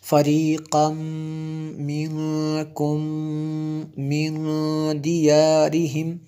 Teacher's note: تنوین کے بعد میم ہے حروف یرملون میں سے، تو یہاں پہ جو ہے ادغام ہوا جی۔ اس طرح یہ جو آگے نون ساکن ہے اس کے بعد کاف حروف اخفا میں سے ہے، اس لیے یہاں پہ غنہ کیا۔